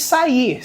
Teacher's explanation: Se você dividir a sílaba, vai ficar sa-ir. Sílaba tônica, ir. Né? Então, é uma oxítona.